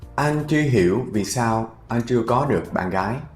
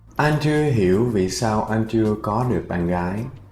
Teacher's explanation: That's how you speak Vietnamese. Every word is spaced evenly. There's a small little space in between every word. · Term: Spacing between words